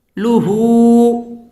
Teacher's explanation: লুহু উল্টা পেশ আসছে, এখানে 1 আলিফ টেনে পড়তে হবে